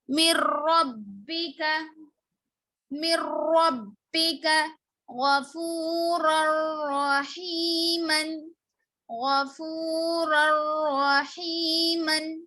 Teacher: من نہیں آئے گا، نون ساکن کو نہیں پڑھیں گے یہاں پر